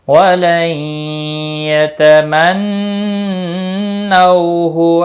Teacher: نون ساکن کے بعد حرف یرملون کا یا ادغام با گنہ ہوگا، نون مشدد پر گنہ ہوگا۔ نو واولین ہے، تھوڑا نرمی کے ساتھ کھینچ کر ادا کریں گے، ہو کو کھینچنا نہیں، کسی بھی حرکت والے حرف کو باقی نہیں کھینچنا ہے۔